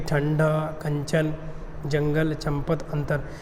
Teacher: अनुस्वार के उच्चारण में वायु जो होती है नाक से निकलती है, और उच्चारण क्या होता है, झटके के साथ होता है।